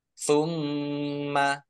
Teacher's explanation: Summa mim tasdid dibaca hunah atau mendengung. Jadi mim tasdid dan nun tasdid itu dibaca hunah atau mendengung. Ditahan 2 harokat.